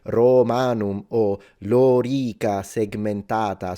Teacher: so both the O and the A are supposed to be long